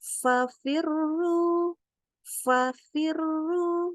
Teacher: Maka ingat, makhrajnya adalah gigi ketemu bibir. Gigi atas ketemu bibir bawah, nggak boleh bibir ketemu bibir.